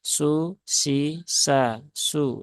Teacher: Sin dhammah dia tipis ya, cukup su biasa.